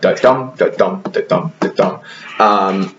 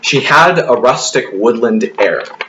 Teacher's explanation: each iamb is a unstressed and then stressed syllable. So it's like da-dum, da-dum, da-dum, da-dum.